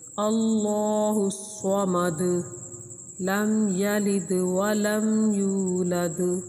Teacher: آخر میں جو دال ہے، دال حروف قلقلہ میں سے ہے، تو اس کو ہلا کر پڑھیں گے